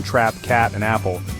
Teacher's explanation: English has important low vowels including front and back ones at ae is an open mid-front unrounded vowel heard in trap cat and apple. Your tongue is low and forward lips unrounded.